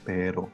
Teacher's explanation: the very very short uh rolling of the r